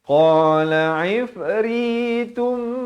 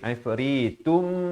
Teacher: Di sini idgham bi gunnah, masuk berserta dengung dua harakat.